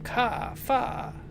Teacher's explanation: We don't sound any final R in words like car, far, etc. Phonetically, our common pronunciation is indistinguishable from ka, fa.